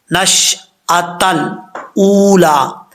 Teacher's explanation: है नश आ ता को लाम से मिलाएंगे लाम साकिन है साकिन लाम में अक्सर लोग कलक कर जाते हैं कलक नहीं करना